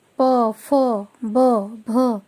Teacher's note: ओष्ठ, मतलब होठ के स्पर्श से वायु जो है वह बाहर आती है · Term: प वर्ग